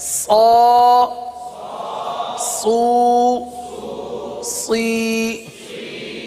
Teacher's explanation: صاد حروف مستعلیہ میں سے ہے اس لیے صاد کو پر پڑھیں گے تو باریک نہ ہو، اس بات کا خاص خیال رکھیں.